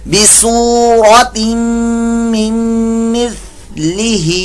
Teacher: ثا کی جگہ سین کی آواز نہیں نکلے گی ، ٹھیک ہے، سین کی آواز نکلی تو یہ لحن جلی